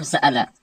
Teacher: ایک مثال لیتے ہیں سألہ، اس میں بین بین قریب اور بین بین بعید دونوں ہیں. حمزہ کو الف اور حمزہ کے مخرج کے درمیان پڑھا جائے گا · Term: تسہیل